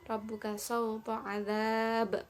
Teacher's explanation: Ba ini termasuk dari huruf qalqalah, maka dibaca dengan memantulkan ya